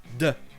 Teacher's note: Le T, quand il n'est vraiment pas accentué, a le son d'un D, de. Et si vous l'accentuez encore moins, on l'entend quasiment pas, et va devenir wanu.